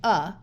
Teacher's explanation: the schwa is a muffled sound that generally sounds like uh